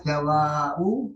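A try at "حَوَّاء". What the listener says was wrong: Hawa. Hawa kan istrinya Nabi Adam. Pakai tasdid ya, Hawa.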